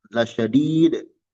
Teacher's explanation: Dal pada kalimat la syahid kalau berhenti la syadid. Muqalqalah indal waqfi alaihima, dipantulkan ketika berhenti padanya.